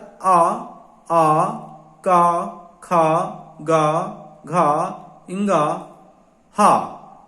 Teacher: ये वर्ण कंठ से बोले जाते हैं।